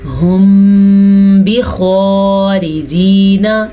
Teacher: میم ساکن کے بعد حرف با آ جائے تو اخفاء شفوی کا قاعدہ ہوتا ہے، یعنی کہ میم کی آواز با کے ساتھ مکس ہو کے ہونٹوں میں گم ہو جاتی ہے اور اس کو غنّے کے ساتھ ادا کرتے ہیں